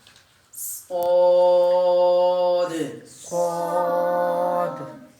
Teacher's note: آخر میں دال ہے, یہ حروف قلقلہ میں سے, اس لیے یہاں پر جو ہے نا وہ ڈبل آواز نکل رہی ہے